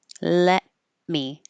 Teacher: You can put your tongue in the T position, let me, but you don't release the airflow, let.